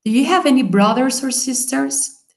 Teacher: Escuchamos más el have y escuchamos más brothers or sisters. · La entonación va, si ustedes escuchan, va hacia arriba.